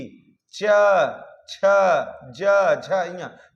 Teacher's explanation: च बोल के देखिए तो अ च नहीं बुलाएगा इसी प्रकार च छ ज झ तो तालू जीभ से हो रहा है